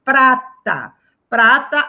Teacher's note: exceção de Prata Prata a classificação dela é paroxitono Ou seja a sílaba tônica dela não é a última é a penúltima sílaba